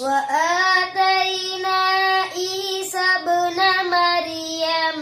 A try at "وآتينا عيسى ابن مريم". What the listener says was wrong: मर, ये रॉ मोटी पढ़ो